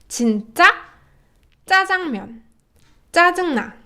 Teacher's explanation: the double consonant sound, it's louder, it's more high in tone, and it's more empathized.